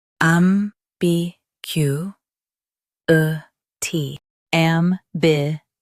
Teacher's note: Emphasize gu and keep a t light.